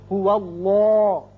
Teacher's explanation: یہ درمیانی جو لام ہے یہ اگر پہلے زبر یا پیش آ جائے تو اس کو پر کر کے منہ بھر کے پڑھتے ہیں. چونکہ واو پر زبر ہے اس لیے اس کو پر پڑھیں گے.